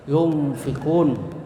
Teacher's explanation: suara nun atau tanwin masih tetap terdengar tetapi samar antara izhar dan idgham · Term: ikhfa